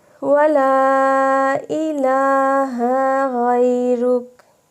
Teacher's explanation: खड़ा ज़बर है, एक अलिफ के बराबर इसको लंबा करेंगे